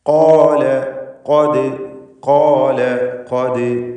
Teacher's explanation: ഖാഫ് ഇസ്തിഅലാൻ്റെ ഹർഫാണ്, തടിപ്പിച്ച് ഉച്ചരിക്കണം. ഷിദ്ദത്ത് ഉള്ള അക്ഷരമാണ്.